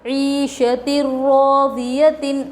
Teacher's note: یا پر جزم حروف مدہ تھوڑا کھینچ کر پڑھے، شین پر زبر حرکت تھوڑا بھی نہ کھینچے، تا پر تنوین، تنوین کے بعد یرملون میں سے را آ رہا ہے، لام اور را کی صورت میں بغیر غنّے کی ملا کر پڑھیں گے، اس کو ادغام بلا غنّہ اور ادغام تام بھی کہتے ہیں، ٹھیک ہے۔